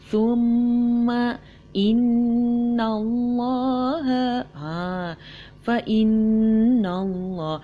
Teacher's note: nun yang berbaris sabdu sahaja, hukumnya asalnya adalah idgham bi gunnah musyaddad dan bacaannya adalah bacaan yang tertahan. Musyaddad, tertahan artinya.